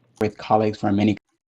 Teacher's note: how much air I blow out with that K sound at the beginning of colleagues